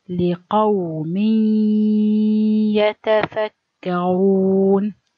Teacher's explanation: when you merge the noon into ya or waw, you have to pronounce it 50% from mouth and 50% from nose or the nasal. The nasal sound 50% and the mouth sound is 50%. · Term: idgham naqis bi ghunna